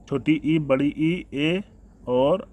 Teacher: अग्र स्वर में छोटी ई, बड़ी ई, ए और ऐ आ जाएंगे